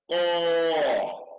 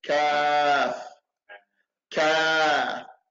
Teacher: The qaf, no air, no sound. But the kaf, no sound, but it has a little air.